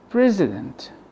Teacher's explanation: The I here is replaced by the schwa. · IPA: ə